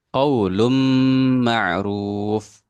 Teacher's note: bunyi Nun di akhirnya langsung masuk ke huruf mim qulum Maruf demikian ya juga suhufan ketemu mthaharah Maka langsung masuk · Nah, begitu juga kalau seandainya tanwin ketemu dengan mim, ya, maka cara bacanya harus dimasukkan qaulun, bunyi nun di akhirnya, langsung masuk ke huruf mim.